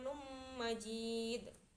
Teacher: ada non sukun bertemu dengan huruf mim, jadi membacanya itu dimasukkan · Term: biguna